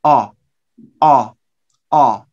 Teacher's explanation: the British vowel here is back. You use the back part of your tongue.